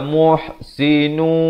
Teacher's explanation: Asalnya muhsinun, nun, tapi bila datang waw masuk beserta dengung. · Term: idgham bi gunnah